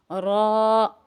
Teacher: را موٹا ہے، را کو تھوڑا سا کھینچیں گے